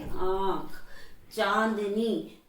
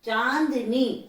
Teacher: अनुनासिक वर्ण वो वाले वर्ण होते हैं जब हम बोलते समय हमारी हवा मुख और नासिका दोनों से बाहर निकलती है